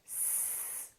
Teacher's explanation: Put your fingers on your vocal cords again, and let's say S. Do you feel a vibration this time? No. Therefore, S is a voiceless consonant.